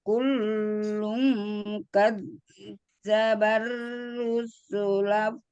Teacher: ikhfa 2 harokat gunanya